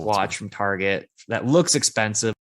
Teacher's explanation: We start with the stress on watch. Then we just dropped. Then we didn't stress that. And then we stressed looks. Then we went higher in pitch, and then we fell.